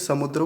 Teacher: समुद्र को समुंद्र बोलते हैं बीच में नकार लगा देते हैं अपनी ओर से या यहां पर अनुस्वार करके बोलते हैं समुंद्र कह देते हैं